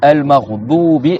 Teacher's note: c'est pas avec le bout de la langue doubi, c'est le côté de la langue. C'est-à-dire le bout de la langue, il interfère pas dans la lettre.